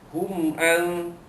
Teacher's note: mim mati jumpa ain, hukumnya izhar syafawi, mematikan, menyatakan bunyi mim mati bertemu dengan huruf ain.